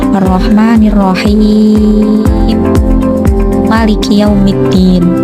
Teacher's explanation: Yang terakhir dibaca tul dengan panjang 6 harokat sehingga menjadi Ar-Rahmanir-Rahim Maliki Yaumiddin.